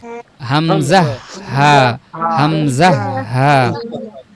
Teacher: তাহলে হলক বোঝাতে পেরেছি, একদম গলার যে শুরুটা একদম নিচের অংশ, বুকের সাথে যে অংশ, হামজা হা।